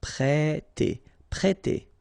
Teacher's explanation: We've got here this accent circumflex on the top of E, so if you remember carefully, it will produce the sound E, so really open